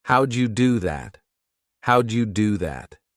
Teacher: Do you was reduced to Jew, and that allowed the question to be asked more quickly and smoothly. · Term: connected speech